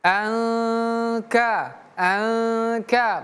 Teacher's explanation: Nun sukun ataupun tanwin kalau bertemu dengan huruf kaf dia dibaca ikhfa.